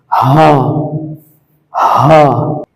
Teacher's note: কণ্ঠনালীর শুরু হইতে উচ্চারিত হয়।